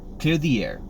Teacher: And the reason is because when you're talking, you're usually going to be talking at a normal speed. And when we speak at a normal speed, we tend to change the TH sound into a D